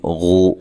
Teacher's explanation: غین کو موٹا ادا کرنا ہے اور یہ واو مدہ ہے